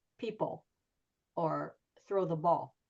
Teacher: you just don't hear the L.